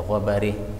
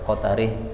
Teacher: Tawalla dibaca tawalli, ini bacaan imalah. A'ma dibaca a'mi, ini adalah bacaan imalah.